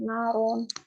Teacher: ro-nya itu berharokat fatatain. Nah, makanya dibaca itu tebal juga tahkim naron.